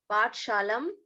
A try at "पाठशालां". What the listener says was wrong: पाठशालां, again you are telling पाठशाला, पाठशालां ठ